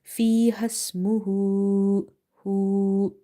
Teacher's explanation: because of inverted dhamma, I have stretched the letter ha